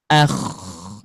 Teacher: Ketika diucapkan huruf gin maka ada suara lembut. Kalau mengucapkan huruf ko maka ada suara kasarnya.